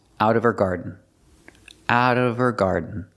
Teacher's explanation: the H in her is silent because it's not a stressed word.